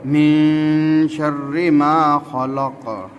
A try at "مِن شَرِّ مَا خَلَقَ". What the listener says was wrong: من रा को पूर्ण नहीं करेंगे, बरीक रा। من شر ما خلق.